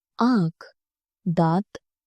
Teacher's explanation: अनुनासिक बोलते समय हवा नाक और मुंह दोनों से निकलती है।